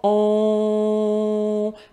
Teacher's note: La façon technique, là, c'est que le fond, le palais mou, le fond de ma gorge se relâche. Il y a comme un clapet, puis il y a une partie de l'air qui va sortir par mon nez. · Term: le on